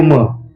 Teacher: म्हटलं की आपलं ओष्ट वर्ण आहे म ओठाला ओट लागतात